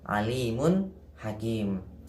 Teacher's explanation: tanwin atau dhommatain ketemu dengan huruf H maka cara membacanya jelas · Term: dibaca jelas